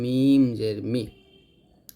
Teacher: মিম দুই ঠোঁট মিল করে